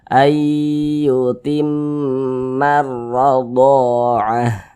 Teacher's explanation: Kemudian di sini huruf ro memiliki tanda baca fathah lagi, berarti huruf ro-nya kita tebalkan, kita baca tafkhim